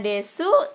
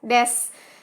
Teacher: menghilangkan bunyi vokal gitu menghilangkan bunyi huruf vokal